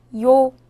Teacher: 요는 먼저 이를 소리내다가 바로 이어서 오를 소리내며 발음합니다.